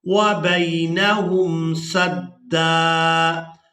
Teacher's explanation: وبینہم سدا۔ اب یہاں پر ہم نے وقف کرنا ہے، تو وقف کی صورت میں دال پر ایک زبر ادا کریں گے اور اس کو ایک الف مقدار کھینچ کر ادا کریں گے